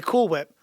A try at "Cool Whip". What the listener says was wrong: Why are you doing that thing with the H?